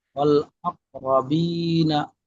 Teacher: শুধু বা টান হবে, র টান হবে না। রটা টান মাঝে মাঝে হয়ে যাচ্ছে, খেয়াল করবেন।